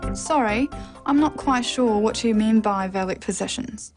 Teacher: The final example is a statement, so a falling tone is used.